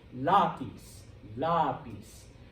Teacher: You're putting stress on the second to last syllable.